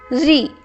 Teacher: री का वर्तमान उच्चारण र प्लस ई री होने लगा है तथा इसका उच्चारण करते समय जिह्वा मूर्धा को स्पर्श करती है। इसका उच्चारण स्वतंत्र रूप से नहीं होता है, री जीभ जो है वो मूर्धा को स्पर्श कर रही है। · आपकी जीभ जो है थोड़ा सा ऊपर उठेगी, मूर्धा को स्पर्श करेगी